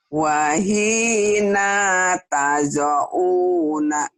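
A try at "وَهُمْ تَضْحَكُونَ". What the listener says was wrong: wahina pendek. Wahina tada'una. Wahina tada'una.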